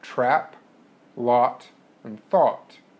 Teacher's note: Vowels produced with a low jaw and a low tongue position include trap, lot, and thought. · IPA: æ ɑ ɔ